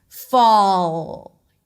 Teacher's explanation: When the L is at the end, there's that extra dark sound for the dark L. But for now, only concentrate on keeping contact between the tip of the tongue and the upper palate.